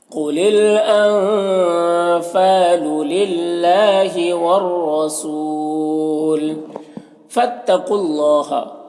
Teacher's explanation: قاف کو پر پڑھیں گے، یہ حروف مستعلیہ میں سے ہے